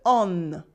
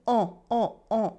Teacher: the n in the sounds is silent in a nasal vowel like this there is only one sound it is a o not a on it is o o